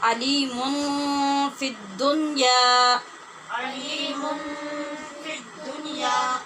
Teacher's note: جب ہم نے علیمن کو آگے ملانا ہے تو یہ نون تنوین کے بعد فا ہے، یہاں پہ اخفا ہوگا